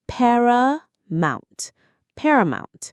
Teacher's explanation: The stress is right at the beginning.